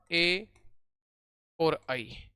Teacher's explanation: इनका उच्चारण कंठ व तालु दोनों से होता है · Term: कंठ तालु